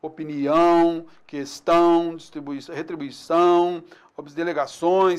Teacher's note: palavras oxítonas, a última sílaba tônica